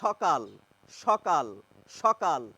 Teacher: তালুব্য স্বয় এর মত করে ফেলেন সে করারও কারণ রয়েছে কেননা বেশিরভাগ ক্ষেত্রে আমরা দন্তস এর উচ্চারণ তালব্যসই করে থাকি